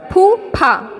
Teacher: फूफा, इसमें ऐसा लग रहा है बहुत ज़्यादा हवा निकल रही है ना